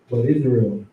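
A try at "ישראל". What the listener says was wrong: But what? Nah, Yisrael with a Y. You go to the Hebrew, like we doing now, it's going to say these exact same characters, Yah, Shah, Ra, Ah, and La.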